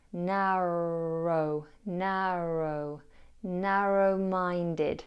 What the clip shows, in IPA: ˈnærəʊ